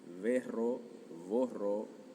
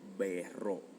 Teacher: Muy importante el hecho de que sea con la V o V labio dental.